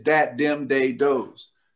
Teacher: there's no th sound in the african dialect